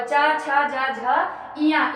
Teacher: च वर्ग का उच्चारण स्थान होता है तालु · यानी ये तालु, इनके उच्चारण में जिह्वा हमारी जो है वो तालु का स्पर्श करती है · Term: तालव्य वर्ण